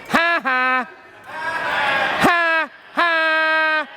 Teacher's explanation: come out with more pressure so we want to think of squeezing that aryepiglottic sphincter around your vocal cords and using it to kind of focus your voice as a laser beam to the back